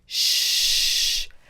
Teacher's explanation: there is no voice or sound from your throat